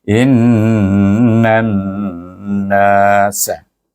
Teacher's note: in itu wajib bergunah dua harakah juga, didengungkan dua harakah